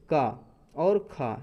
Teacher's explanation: प्रत्येक वर्ग का पहला और दूसरा वर्ण, जैसे का और खा, ये क्या है, अघोष हैं